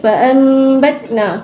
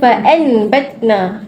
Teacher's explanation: Kita tukarkan daripada bunyi nun kepada bunyi huruf mim bila bertemu dengan huruf ba. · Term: iqlab, iklab